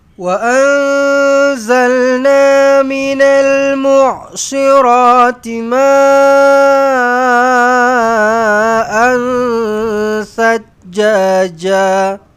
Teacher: Panjang ma 4 ataupun 5 harakat dekat sini, mad wajib muttasil.